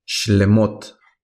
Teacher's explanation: no pronunciamos el sonido de la E